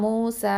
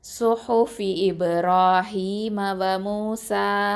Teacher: 2 ஹர்க்கத்தை மட்டும்தான் நம்ம வந்து நீட்டி நிப்பாட்டணும்.